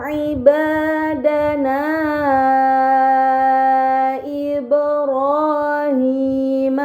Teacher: pada kata ibadana Ibrahim terdapat mad bertemu hamzah bukan dalam satu kata. Ini dinamakan mad munfasil, maka harus dibaca panjang selama 4 atau 5 harokat.